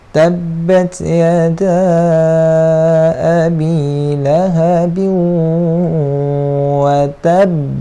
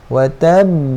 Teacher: Kita lambatkan bunyi lantunan dia tu. Maksudnya kita tahan sekejap, baru kita lepaskan lantunan dia. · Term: qalqalah asyaddul kubra